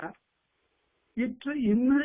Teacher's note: இற்று இன் என்ற இந்த இரண்டு எழுத்துக்கள் நுனி நாக்கு போய் அன்னத்தை போய் ஒற்ற பிறக்கும்